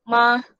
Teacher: Okay, so kita move on untuk first tone in pinyin. So first tone ni kita panggil flat tone. Sebab cara sebutan dia pun memang flat